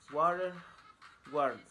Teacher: W. Place of articulation, bilabial. Manner of articulation, glide. Voicing, voiced.